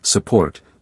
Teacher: Instead of saying support clearly, we say support with the first part dropping into the schwa.